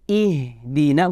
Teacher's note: Kalau huruf ha lebih lembut, lebih dilepaskan, mengalir.